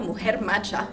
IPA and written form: ˈmoo-hehr ma-cha (mu·jer·ma·cha)